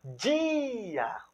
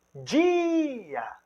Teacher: O I, ele é tônico. Ele tem uma ênfase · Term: I tônico